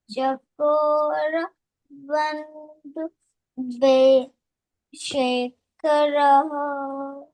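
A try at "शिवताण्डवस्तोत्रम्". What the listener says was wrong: You are reading correctly, but now there is a tala problem is still going on. So you have to read in a tala.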